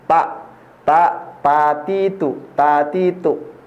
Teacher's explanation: lidah harus menempel ke Pangkal gigi bagian atas nih pak tak Pati itu tatitu ya Sehingga bukan di sini